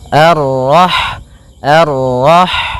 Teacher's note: Rah di sini ada huruf ha ha yang berharakat Sukun dan sifat ha itu yang paling mencolok adalah sifat hamasnya yaitu mengalir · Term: sifat hamsnya